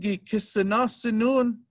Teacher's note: And when we talk about past tense or present tense, we'll have our marker here, gi. And then consonant vowel change happens, G changes to K